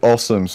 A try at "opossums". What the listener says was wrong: They have opossums. No, the P is not silent.